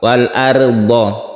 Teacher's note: rok sukun sebelumnya ada fathah, ini ditebalkan atau disebut rok tafkhim, rok tebal.